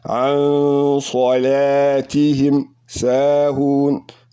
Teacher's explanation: Sad came after the nunu sakin, making ikhfa. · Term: heavy ikhfa